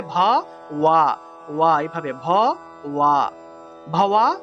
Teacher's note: এই বটা হলো অন্তস্তব। তাহলে ভাওয়া উচ্চারণ হবে ভ ওয়া